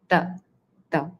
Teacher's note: T where you touch the tongue to the back of your upper row of teeth inside your mouth which gives this sound t. So your tongue is totally touching the teeth. Ta. Also a little bit of your lower teeth as well not just the upper.